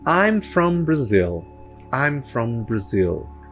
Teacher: tenho o apóstrofozinho que mostra que zil é meu som mais forte, né? Mas a gente em português fala Brasil, esse L tem som de U por conta da nossa própria língua, da linguística da nossa língua.